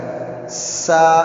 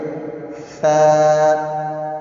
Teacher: زبان کا تھوڑا سا حصہ دانتوں کو لگ کے باہر کو آتا ہے، اور یہ آواز نہیں آنی چاہیے۔